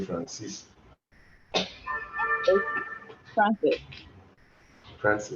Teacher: You stress it as the second syllable.